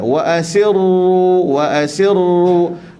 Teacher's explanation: Getar sikit je. Wa asirru double R. Maknanya kita tekan pada ra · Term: takrir